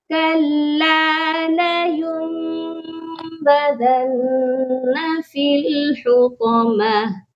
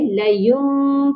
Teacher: تو یہاں اس کو کَلَّا لَيُنبَذَنَّ فِي الْحُطَمَةِ، لیون کی بجائے لیوم پڑھا جائے گا، میم کی آواز میں نون ساکن کو بدل دیا جائے گا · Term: اقلاب